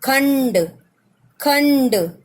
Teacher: तो हम इसको भी आधा है इसलिए हमने डॉट अनुस्वार के रूप में लिख लिया, डॉट के रूप में, लेकिन इसकी ध्वनि अणा की होगी